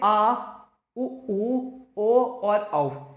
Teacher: पश्च स्वर का मतलब है जिसमें जीभ का पश्च वाला भाग टच होता हो, जैसे आ, उ, ओ और औ, ऐसे वर्ण कहलाते हैं पश्च स्वर, ऐसे स्वर कहलाते हैं पश्च स्वर।